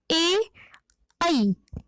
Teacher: जब हम ए और ऐ का उच्चारण करते हैं तो हम देखेंगे कि हमारी जो जीवा है वह हमारे तालु को स्पर्श करती है और जो ध्वनि निकलती है वह सीधे कंठ से निकलती है, ए ऐ। तो कंठ, ऐसे वर्णों का उच्चारण कंठ और तालु से होता है। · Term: कंठ तालु